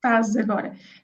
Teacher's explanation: certainly in the more Lisbon area, we tend to drop the es from the verb estar